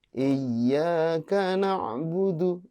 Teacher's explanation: iyyaka na'budu itu nggak boleh ditahan, cukup ditekan karena itu hanya tasydid. Iyyaka na'budu ya, bukan iya ya, jangan ditahan.